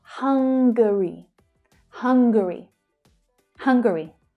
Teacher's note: Notice the extra little syllable there, so it sounds different from the adjective hungry.